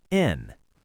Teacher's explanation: it's okay for the word and to just sound like a quick N.